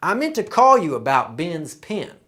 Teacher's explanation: for southern the vowel sounds i and e are pronounced the same way. So this word is pin but this word is also pin. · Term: pin pen merger